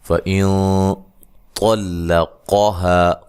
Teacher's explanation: نون ساکن کا یہاں موٹا اخفا ہے، اس کی ادائیگی میں آواز غنہ جو ہے وہ موٹا ہوگا